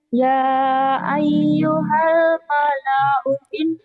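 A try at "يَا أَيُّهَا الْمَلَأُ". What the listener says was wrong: Pendek, pendek. Kan nggak pasangan. Ya ayyuhal mala'u ini pendek, pendek. U-nya pendek kan nggak pasangan, bukan matobi'i.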